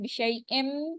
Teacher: اب تنوین کے فوراً بعد میم مشدد آ رہی ہے، اس کے ساتھ مل جائے گی